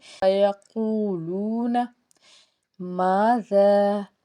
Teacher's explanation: الف سے پیچھے زبر ایک الف کے برابر کھینچیں گے۔ زال کے بعد آگے مد ہے تو اس کو ہم نے تین الف کے برابر کھینچنا ہے۔